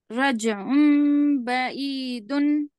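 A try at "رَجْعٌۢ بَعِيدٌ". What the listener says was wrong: हाँ, थोड़ा आइन की आवाज पे, थोड़ा मखरज पे जोर दीजिए खाली। नहीं, जीम में खलखला होगा। कौफ तो बा जीम दाल, 5 हरूफ है वो।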